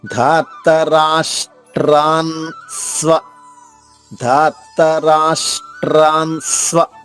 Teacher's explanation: ధార్తరాష్ షా పొల్లుగా చెప్పి ట్రా విడిగా చెప్తే ఉచ్చారణ మనం సులభంగా చెయ్యొచ్చు. అలాగే స్ట్రాన్ ఇక్కడ నా పొల్లుగా చెప్పేసి ముందు స్వ విడిగా చెప్తే ఇక్కడ కూడా మనం సులభంగా చెప్పగలము.